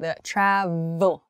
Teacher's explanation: travel uh in travel it's a very tall travel and then it's followed by a v sound the Trav so your teeth are touching your lip uh to make an exaggerated pronunciation